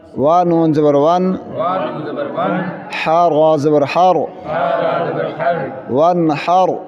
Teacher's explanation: اس نون ساکن پر غنہ نہیں ہوگا، اس لیے کہ اس کے بعد ہا آ رہا ہے، ہا حروف حلقی میں سے ہے۔